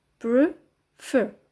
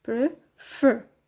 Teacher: the stress is on the second syllable, fer. Prefer.